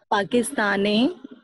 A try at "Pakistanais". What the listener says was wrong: Pakistan. आपको as last में एस तक साउंड करना है. पाकिस्तानीज. जस्वी पाकिस्तान. Pakistanis. Nez. So Jasvi Pakistanis. This is the right way. Jasvi Pakistanis.